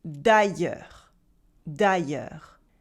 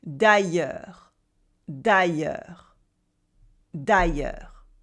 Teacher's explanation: it has a weird pronunciation with the y sound, the e, and the silent s at the end